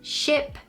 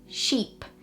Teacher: difference in sound for example the difference between ship and sheep the only difference is the length of the vowel in the middle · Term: minimal pairs